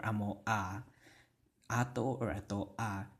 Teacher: when you have two vowels together, you're going to have that glottal stop between the two vowels, and you will pronounce each of those vowels separately